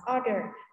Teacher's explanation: mình sẽ không nhấn vào cái âm ơ này này và mình sẽ nhấn vào trước nó, order. Và sweater là áo len thì cũng thế.